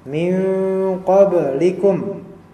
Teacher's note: dia adalah qalqalah karena ba-nya mati.